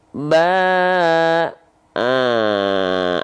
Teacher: An Ah ya tidak lagi dibaca menjadi Ban tapi dibaca menjadi dibaca menjadi vokal a dengan kadar panjang dua harakat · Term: Mad Iwat